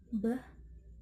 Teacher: The place of articulation is bilabial. The manner of articulation is plosive. The B sound include voice.